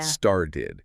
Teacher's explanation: that middle consonant isn't a sharp, distinct T, like started. It's much closer to a quick D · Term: flap T